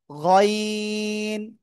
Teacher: গাইন না, গইন। গইন, গলার শেষ ভাগ থেকে উচ্চারণ হবে